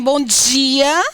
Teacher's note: Na Bahia você tem bom dia, que é mais chiante.